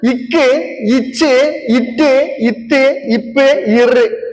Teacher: இது நெஞ்சில இருந்து வரக்கூடிய அழுத்தம், அதனால இதுக்கு வல்லினம்